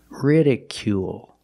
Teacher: Make the long oo sound plus the dark L at the end of the word.